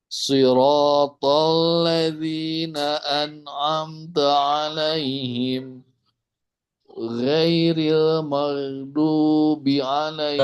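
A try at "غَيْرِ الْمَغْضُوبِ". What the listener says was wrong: Terlalu tipis. Tebalkan sedikit.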